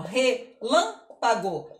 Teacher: o lã é a mais forte porque está com acento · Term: tônica